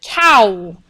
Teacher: it's it's a vow that has two different sounds to it so it's a gliding vowel so it makes two sounds